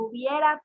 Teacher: El hubiera también tiene diptongo, una vocal cerrada y una abierta.